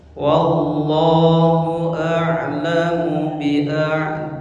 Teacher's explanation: 2 kali lipat panjang Allah. Allah 2 harakat, a'da 4 harakat. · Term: mad wajib